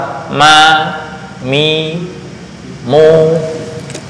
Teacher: Dua ujung organ suara ya. Bibir atas dengan bibir bawah tapi ketika berharokat ma, mi, mu bersuara ya.